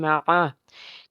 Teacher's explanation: میم جو ہے میم زبر ما، عین جو ہے حرف حلقی کا حرف، حلق کے درمیان سے اس کو ادا کرنا ہے